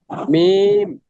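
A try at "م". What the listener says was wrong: না, হলো না। দুই ঠোঁটের শুকনো জায়গা একত্রিত করেন, হ্যাঁ হ্যাঁ, এইভাবে এইভাবে, হ্যাঁ। আগে একত্রিত করেন, পরে উচ্চারণ করবেন, আগে একত্রিত করে রাখেন, এভাবে।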